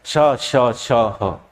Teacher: इन व्यंजनों के उच्चारण में हवा मुंह में घर्षण करते हुए बाहर आती है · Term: संघर्षी व्यंजन